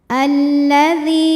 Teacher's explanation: Lam sukun dan lam fathah. Lam yang sukun tidak dibaca sehingga kita masuk ke lam kedua dinamakan dengan idgham syamsi.